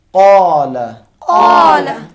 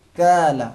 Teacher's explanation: زبان کی جڑ نرم تالو سے, وہ بھی زور سے ٹکرانا ہے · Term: قاف قلم